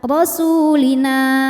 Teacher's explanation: jika berhenti di na, hukumnya mad tabi'i karena ada alif didahului harokat fathah, maka dibacanya panjang 2 harokat, rasulina. Namun jika wasol dibaca pendek, madnya gugur, namanya takhallus bil hadfi.